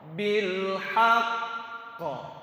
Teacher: Ada jarak dan jaraknya harus diperjelas. antara ha dengan pantulan qa.